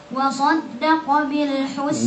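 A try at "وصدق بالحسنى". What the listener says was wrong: Jangan wasan, jangan masuk hidung. Wa saddaqa, jelas dari sini. Wa saddaqa.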